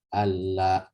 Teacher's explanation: Alla, bukan an, karena sudah mengalami proses idgham di situ. Idgham yang menjadi satu kesatuan kata.